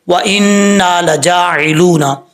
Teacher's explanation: نون کے اوپر شد ہے، غنہ کریں گے، ایک الف کی مقدار لمبا کیا جائے گا